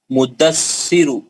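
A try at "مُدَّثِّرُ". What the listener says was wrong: मुद दसिरु हां ऐसा पढ़ना क्योंकि दो दाल है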